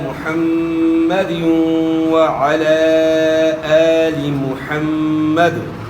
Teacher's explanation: دال کے نیچے دو زیر کی تنوین ہے، اس کے بعد حروف یرملون میں سے واو ہے تو ادغام مع الغنہ ہے